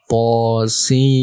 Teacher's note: To-nya 2 harokat dan Sin-nya 6 harokat.